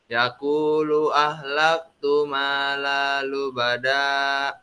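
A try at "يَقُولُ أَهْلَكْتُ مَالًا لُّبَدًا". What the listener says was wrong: Ada yang tasdid yang kurang yang terlewat tadi. Malal lubada. Malalu bada, malalu bada.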